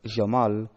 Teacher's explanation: In modern standard Arabic, the phoneme is pronounced like the English J sound. In some Arabic varieties, including Palestinian, even deaffricated the J to sound like the J in English vision or French J.